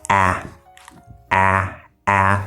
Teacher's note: You can see my mouth is very open. Still using the front part of my tongue, but my mouth is open.